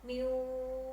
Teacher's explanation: wawnya bertasydid, kalian tahan bacaannya 3 ketukan